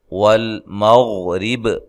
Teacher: غین کو موٹا ادا کریں، غین کو ہلانا نہیں ہے، اور وقف کی صورت میں با کو خوب واضح کرنا ہے۔